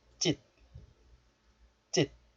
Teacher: The 사이시옷 is followed by the first consonant 지읒. So the sound of the first consonant 지읒 becomes tensed. And 짓 becomes 찢.